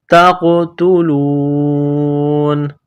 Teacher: جب سٹاپ کریں گے، وقف کریں گے تو نون کو سائلنٹ کریں گے